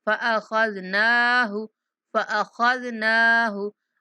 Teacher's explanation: ख़ा को पुर पढ़ना है, ज़ाल को नहायत नरमी के साथ, नून को 1 सेकंड तक लंबा करना है। फ़अख़ज़नाहु हा को नहीं खींचना।